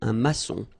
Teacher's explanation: O-N in your nose, nasal